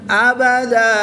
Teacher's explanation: زبر کی تنوین کو وقف کی حالت میں الف مدہ سے تبدیل کر کے پڑھیں گے